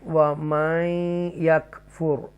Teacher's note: تفخیم کے ساتھ را کو پڑھیں گے